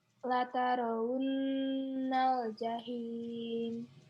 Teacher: Ya, di situ ada gunnah. Non bertasdid itu gunnah. Gunnah itu harus ditekan dan ditahan.